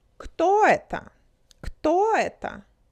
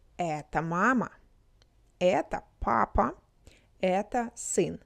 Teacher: Notice how questions have rising intonation and statements have falling intonation.